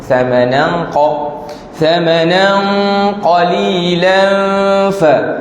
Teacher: Tu tanwin bertemu dengan qaf. Tanwin bertemu dengan qaf, ikhfa. Jadi bunyi jadi tebal pula.